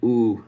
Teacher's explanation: it's just the ooh sound which is back high with lips rounded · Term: oo sound